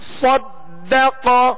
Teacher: قاف پر زبر ہے لہذا اس کو کھینچیں گے نہیں اور حروف مستعلیہ میں سے بغیر ہونٹ گول کیے اسے پور یعنی موٹا پڑھنا ہے